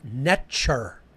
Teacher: That's the English equivalency phonetically. It was actually pronounced Netcher. The T is a ch sound